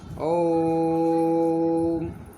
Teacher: अगर ओम का हम सही तरह से प्रयोग करते हैं, इसमें नाभि पर बल पड़ता है और इसमें ज़्यादा समय लगता है